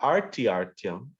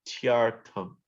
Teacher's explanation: Not artyartyam, it's tyartam. There's no R before the T.